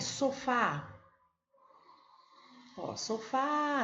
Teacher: Terminou em A, ó, é acentuada seguida ou não de S. Então, sofá é uma palavra oxítona porque a sílaba forte dela é a última